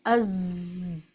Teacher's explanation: حروف صفیر اس لیے کہتے ہیں کہ اس میں ایک آواز سیٹی جیسی معلوم ہوتی ہے